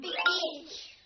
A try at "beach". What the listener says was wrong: Longer sound. Beach. Together.